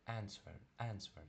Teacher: коли а на початку стоїть в слові, вона тоже наближено до е читається